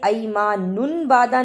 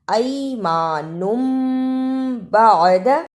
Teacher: اس پر تھوڑی سی دیر لگانی ہے، یہاں نون کی آواز میم میں بدل جائے گی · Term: اقلاب